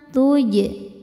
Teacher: Huruf jim sukun hukumnya qalqalah sugro karena jimnya sukun-sukun asli dan berada di tengah bacaan. Cara bacanya jim dipantulkan dengan pantulan yang kecil.